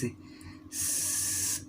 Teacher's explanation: viven las cuerdas vocales por ejemplo si tú haces una s tócate con tu mano en la garganta y haces a s vas a notar que tus cuerdas vocales no vibran